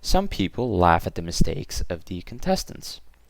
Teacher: we have no joining word so we'll just lower our voice towards the end of the sentence